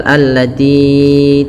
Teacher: Kemudian belafal allati, ti-nya panjangkan ya sepanjang 4 harakat atau 5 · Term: mad jaiz munfasil